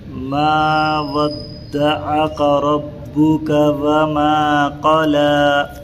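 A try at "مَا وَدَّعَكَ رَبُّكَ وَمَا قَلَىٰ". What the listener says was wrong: تھوڑا عین کو ادا کیجئے۔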